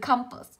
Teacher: Âm đầu tiên của cô là á, âm thứ hai là ơ, cho âm rơi vào âm tiết đầu